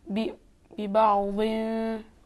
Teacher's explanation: बी बाउन तनवीन को फे के मखरज में छुपाएंगे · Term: इख्फा